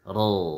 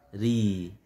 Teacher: kalau fathah tafkhim ra, kalau dhammah tafkhim ru, kafaru ya kan. Tapi kalau kasrah jadi tipis, tarqiq ya, ri ya. Nah, itu yang disebut dengan tafkhim.